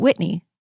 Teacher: my dad and I both raised in California have always pronounced it Whitney without an audible H